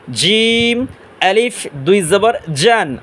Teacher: উচ্চারণ করব জিহ্বার মাঝখান তালুর মাঝখান থেকে